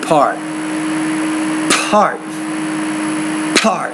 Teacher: you need to force more air out of the oral cavity when you're producing the P consonant sound